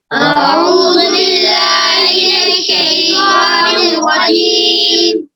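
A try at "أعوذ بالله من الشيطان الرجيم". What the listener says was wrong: आऊज़ नहीं, आऊज़ु, जाल पे ज़ू है ना, हम लोग खड़ा नहीं पढ़ना। आऊज़ु पहले हमजा है, फिर ऐन है, फिर जाल पे पेश है। अऊज़ु बिल्लाहि मिनश शैतानिर रजीम।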